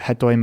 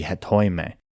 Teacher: because the final syllable is this ita, which is considered a long vowel, it pulls the accent onto the second syllable, so instead of hetoime, it should be hetoime.